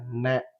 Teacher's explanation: நாவினுடைய நுனி அந்த மேல் அண்ணத்தினுடைய நடு பகுதியை தொடுவதால் நகரம் பிறக்குது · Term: மூணு சுழி நகரம்